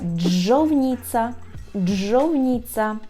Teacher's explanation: бо двічі у нас так є звук Дж і він подовжується